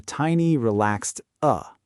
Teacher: Often the vowel becomes a small relaxed sound. Many teachers call it schwa.